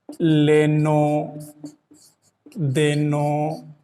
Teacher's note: ब्रज भाषा ओकारांत या ओकार बहुला है